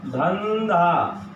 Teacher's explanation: यहाँ ध होने से अनुस्वार का ध का पांचवा न हो गया,